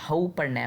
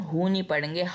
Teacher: हऊ जो है वो हरूफ लीन बनेगा, इसको हम हु नहीं पढ़ेंगे, हऊ पढ़ेंगे। कुछ लोग गलती कर जाते हैं, इधर हु पढ़ लेते हैं कि यहाँ पे तो वाव साकिन है, मगर हमने हऊ पढ़ना है।